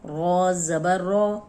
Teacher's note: رو پہ جب بھی زبر آئے گی تو رو موٹی پڑی جائے گی